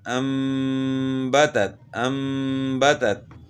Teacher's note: تام پڑھیں گے تو تا کی آواز کو ہم نے کھینچ لیا تو یہ غلطی ہے